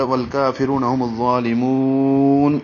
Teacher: کاف کو 2 حرکات لمبا کریں گے، رو کو 2 حرکات لمبا کریں گے اور را کو پر پڑھیں گے